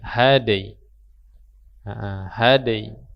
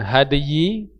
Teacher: Ya, minal had. Sudah had, tambahkan huruf ya tengah lidahnya dengan cara menempelkan di tengah langit-langit